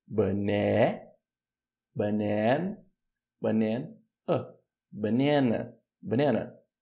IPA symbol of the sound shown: ə